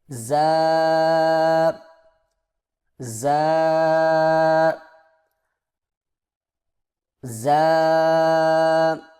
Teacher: زبان کی نوک کو سامنے والے نیچے کے 2 دانتوں کے کناروں سے مضبوطی سے لگا کر باریک اور سیٹی جیسی آواز میں پڑھیں